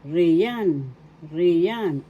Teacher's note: First syllable, ri, second syllable, yan. The accent is in the second syllable